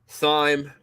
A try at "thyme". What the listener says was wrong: So why are you emphasizing the H? Thyme. Yeah, why are you emphasizing the H?